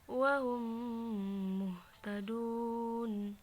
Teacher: ketika mim mati bertemu dengan mim yang berharokat, maka dibaca dengan didengungkan. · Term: idgham mimi